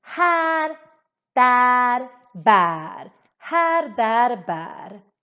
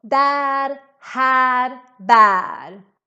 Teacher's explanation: In all these words, we have a very long version of the ä. And this is because with just one consonant coming after.